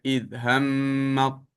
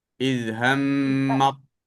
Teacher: sebutan huruf ta dimasukkan secara sempurna ke dalam huruf ta.